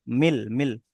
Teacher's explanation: সাকিনটাকে লামের সাথে মিলিয়ে পড়তে হবে।